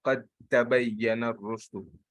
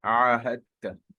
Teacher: you will merge the dal and the ta